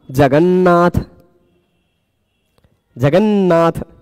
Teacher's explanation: जगत नाथ जगन्नाथ जगन्नाथ ता के जगह पर न हो गया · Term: अनुनासिक